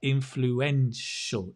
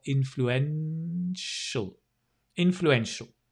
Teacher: it's a shul with that dark l if you like influential influence so your tongue touches the top